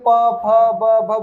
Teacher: प फ ब भ बोलने पे क्या हो रहा है? लिप आपस में टकरा रहे हैं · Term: ओष्ठ